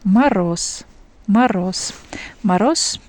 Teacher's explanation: when we uh see Z at the end of words, we pronounce S instead of Z.